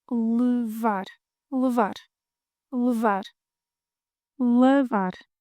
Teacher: To take, mute E, open A,